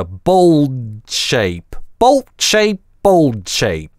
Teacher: bolt это /l/ резко обрывается гортанной смычкой bolt shape. А bold shape - за счет того, что /d/ мы пытаемся выговорить, это /l/ немножко продлевается.